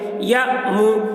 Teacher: پیش کو جلدی پڑھیں، تھوڑا بھی نہ کھینچیں، معروف پڑھیں، مجہول آواز سے بچیں